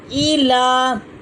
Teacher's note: لام کے اوپر کھڑی زبر ہے جس کو ایک الف کے برابر کھینچا جائے گا